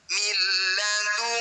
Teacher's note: Bunyi nun sukun masukkan pada lam tanpa dengung. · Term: idgham bila gunnah